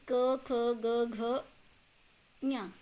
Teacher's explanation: इसका उच्चारण स्थान है कंठ यानी गले से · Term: कवर्ग